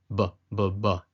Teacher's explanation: making a bilabial b sound, b, as in basketball. You use both your lips